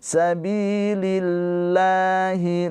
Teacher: Jangan an tapi ana dibaca dengan samar ditahan dua harakat sabilillahi bi panjang dua harakat ini mad thobi'i